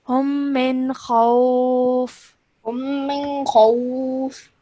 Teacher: no light nasal sound is produced because the next letter is kha